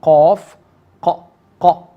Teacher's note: Only this one, qaf, pronounced in a rounded manner.